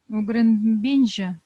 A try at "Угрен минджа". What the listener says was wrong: Угрен бинджа или минджа? Угрен минче. Угрен минджа.